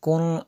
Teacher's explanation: نون ساکن کے بعد فا پڑھا حروف اخفا میں سے، تو یہاں پہ غنہ بھی کریں گے